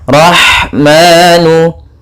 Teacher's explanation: Kemudian rahmanu, pada lafaz rah yaitu ada ha yang memiliki sifat hamas, mengalirnya nafas kita dalam pelafalannya dan halus lembut dalam pelafalannya. Kemudian ada manu, ada mad tabi'i yaitu adanya fathah bertemu dengan alif kecil, maka ini kita namakan mad tabi'i, panjang 2 harakat.